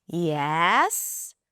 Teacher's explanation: the rising intonation has an open quality to it